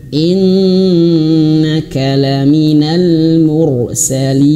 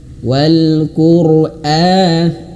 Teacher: nun bertasydid itu durasi gunnahnya itu lebih lama daripada mat tabi'i